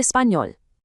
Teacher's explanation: It sounds like an N followed by a Y, giving it that really distinct, lovely tone. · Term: ñ sound